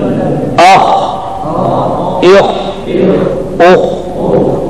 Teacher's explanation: आवाज मोटी हो इस्तेला की वजह से, जारी हो रिखवत की वजह से